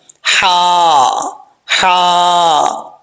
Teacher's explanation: آگے ہے، یہاں پر اس لفظ کے اندر ہا جو ہے وہ باریک ہے، اس ہا کا تعلق جس حلق سے ادا ہوتی ہے وہ حلق منہ کی طرف ہے، اس لیے اس کو باریک پڑھا جائے گا، ہا ہا، اوکے۔